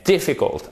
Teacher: accent tonique sur la première syllabe et pour nous francophones c'est pas forcément intuitif